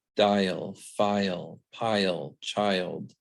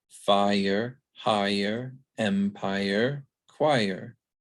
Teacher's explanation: the liquids are always pronounced as their own syllables